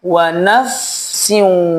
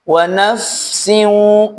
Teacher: Wa naf mengalir dulu fa-nya, sempurna mengalirnya, deras mengalirnya, baru masuk sin.